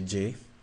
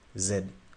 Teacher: when you say J you stop the air with your tongue in the middle before letting it out you stop in the middle you block the air and then